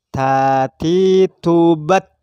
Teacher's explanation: Tapi bunyi hamas itu bukan bunyi yang memang disengaja dikeluarkan, tapi karena faktor tekanan makharijul huruf yang kita lafadzkan, sehingga ketika tak itu mati dan lidah kita lepas, maka hamasnya keluar.